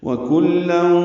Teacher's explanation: واو ہونٹوں کی نا تمام گلائی سے